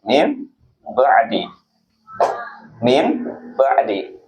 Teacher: Karena iqlab itu artinya mengganti dari nun mati ketemu dengan ba, maka dibacanya adalah mim